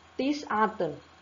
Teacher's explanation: Tetap keluarnya huruf ta adalah di ujung lidah karena makhrajnya di situ.